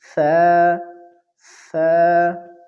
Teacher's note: زبان کی نوک جب ثنایا علیا یعنی اوپر والے دو دانتوں کے کناروں سے لگ جائے تو اس سے ثا ادا ہوگی